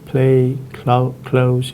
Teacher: The aspirated L occurs when preceded by an aspirated voiceless plosive